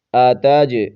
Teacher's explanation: جیم پر قلقلہ کریں گے